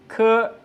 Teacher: is like the English k in kite, but it is released with more force